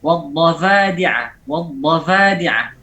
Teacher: Kemudian mengganti huruf fa dengan atau memberinya sifat jahar. Fa yang seharusnya hamas diganti menjadi jahar.